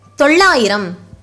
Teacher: While pronouncing it, a tip of the tongue touches the middle roof of your mouth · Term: big la letters